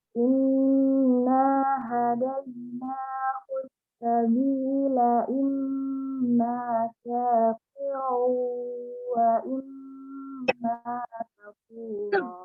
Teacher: Inna hadaina sabila imma syakiran wa imma kafura. Karena dia mim bertasydid dan nun bertasydid dibaca dengung yang lama